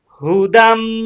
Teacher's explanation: মিমের উপর যদি তাসদিদ চিহ্ন পাওয়া যায় তাহলে এখানে গুন্না করা ওয়াজিব হয় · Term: ওয়াজিব গুন্না